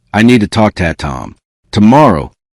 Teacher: The final K in talk moves quickly toward the T and the word to becomes weak. Then it connects with Tom.